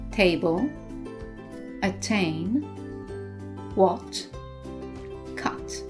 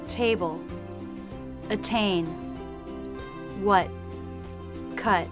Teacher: in American English, they tend to drop the T in the final position.